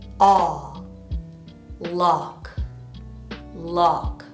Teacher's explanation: The second word has the aw vowel, mouth open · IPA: /ɑ/